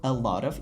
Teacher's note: Bizda mana bu T tovushimiz shunchaki D ga aylanyapti.